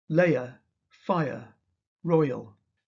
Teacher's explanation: Some speakers have two syllables in these words, which are therefore not really triphthongs. layer fire royal Some have such a small change of vowel quality that the sound is almost a pure vowel.